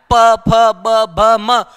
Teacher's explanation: क्या इसका उच्चारण आप दोनों होठों को स्पर्श किए बिना कर सकते हो क्या नहीं कर सकते